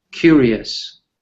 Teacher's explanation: it's actually that RI that has the stress in curious